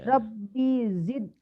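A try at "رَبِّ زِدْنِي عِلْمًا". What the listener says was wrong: B-nya pendek. Rabbi biasanya ini pendek. Rabbi zidni ilma. Rabbinya pendek. Rabbi zidni ilma. Rabbi zidni ilma.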